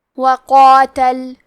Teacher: کلمت قاتل میں قاف کو اور اس کے بعد مد الف کو دونوں کو موٹی آواز میں پڑھنا ہے